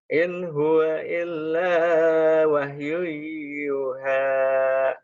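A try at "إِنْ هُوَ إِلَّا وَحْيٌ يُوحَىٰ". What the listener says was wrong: Yunya panjang. In huwa illa wahyui yuha. Illa wahyui yuha.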